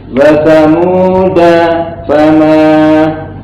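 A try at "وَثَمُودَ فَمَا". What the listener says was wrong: Nah, ulang. Jadi kalau di ini bukan pembahasan sabta, jadi nggak boleh berhenti sejenak. Wa samuda fama, langsung.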